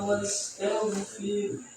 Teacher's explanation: Jangan to, jangan to, tapi ta. Tipiskan taknya, tebalkan goinnya.